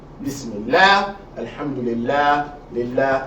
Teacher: if the word Allah is preceded by a kasra, you're going to pronounce the lam lightly, not heavily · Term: soft lamb